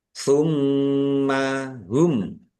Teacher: mim tasdid dibaca gunnah atau mendengung, ditahan biar tampak mendengungnya